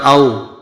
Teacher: واو لین کو نرمی اور جلدی سے پڑھیں گے